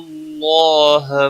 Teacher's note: اللہ کا لام موٹا پڑا جائے گا